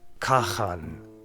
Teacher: The Khan had a K, not Ch, and a final N hadn't merged with Ng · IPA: / kaxan /